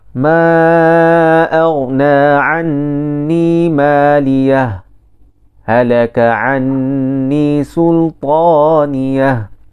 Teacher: Berhenti, kemudian membaca bacaan baharu tanpa mengambil nafas. Baru. Memulakan bacaan selepas daripadanya tanpa mengambil nafas baharu. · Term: saktah